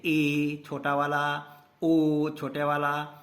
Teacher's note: संवृत स्थिति से कुछ अधिक खुलता है अर्थात मुंह आधे से कम खुलता है पूरा नहीं खुलता जबक सम्रत स्वर में क्या होता था कि